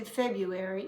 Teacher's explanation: notice there's an r in it but we don't usually pronounce it because it's hard